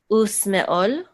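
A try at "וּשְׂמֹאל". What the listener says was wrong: You know not to pronounce the aleph here because there's no vowel associated with the aleph.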